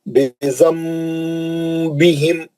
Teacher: नून साकिन के बाद बा है तो ने वहां एक मीम लिख दिया। हम वो नून की आवाज को मीम से बदल के गुन्ने से पढ़ रहे हैं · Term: इखलाब